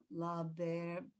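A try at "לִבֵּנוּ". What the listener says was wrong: Look at the vowel under the lamed. No, it's E. It's a 1 dot.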